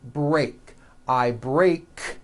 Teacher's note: break ends with an unvoiced K sound there's no voicing on that K